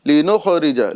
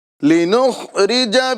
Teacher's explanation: لِنُخْرِجَ یعنی خا میں قلقلہ نہیں کرنا ہے. یہ خا کو قلقلہ کے ساتھ اس طرح پڑھتے ہیں لوگ، لِنُخْرِجَ.